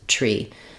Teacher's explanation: you can just use the aspirated T tree so making sure that there's release of air before your